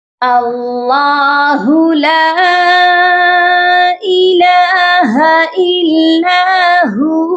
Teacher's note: اللہ کے لام کے اوپر کھڑی زبر ہے، اس کو ہم نے ایک الف کے برابر لمبا کر کے پڑھنا ہے اور اللہ کے لام کو موٹا کر کے پڑھا جائے گا، اور اللہ کے ہو کو ہو نہیں پڑھا جائے گا، اللہ ہو ایسے بالکل نہیں پڑھنا۔